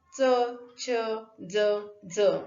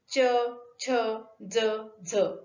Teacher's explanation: च चे 2 उच्चारण होतात, एक म्हणजे तालव्य आणि दुसरं दंत्य. तालव्य उच्चारण च, छ, ज, ज आणि च, छ, ज, झ ही दोनही उच्चारणं अर्धस्फोटक आहेत.